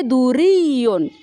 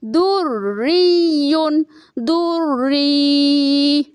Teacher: تو یہاں پہ جب ڈبل شدہ آئے ایک ہی لفظ میں، ایک ہی کلمے میں، تو یہاں پہ دونوں مشدد کا ہم لحاظ رکھیں گے۔ تو دریٌ، را کو بھی مشدد پڑھیں گے، ڈبل پڑھیں گے، اور یا کو بھی مشدد کر کے ڈبل پڑھیں گے، دریٌ دری۔